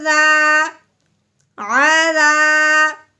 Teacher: دال کو اس الف سے پہلے زبر آنے کی وجہ سے ایک الف کے برابر لمبا کرنا ہے